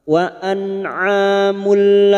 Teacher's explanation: Nun sukun atau tanwin yang bertemu dengan 2 huruf ini, lam dan ro, maka bunyi duma tanwin masuk pada huruf lam tanpa mendengung, tanpa ditahan lama-lama. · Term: idgam bila gunah, idgham bila gunnah